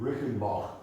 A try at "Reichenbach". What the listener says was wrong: Reichenbach, a little bit more guttural. Reichenbach.